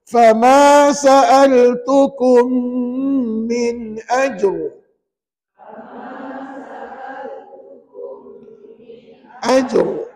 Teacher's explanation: Maka ra tu kata ulama kena baca tebal. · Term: ra tebal, R tebal